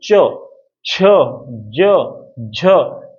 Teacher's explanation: च वर्ग वाले जो व्यंजन है ये आपके तालव्य हैं। तालव्य मतलब जिसमें जीभ जो है ऊपर वाले तालु से रगड़ खाए